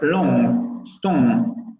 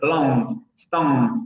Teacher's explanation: La pronunciación del RP sería long, stone, con los labios labializados, pero en esta parte va a ser long, stone, sin labializar.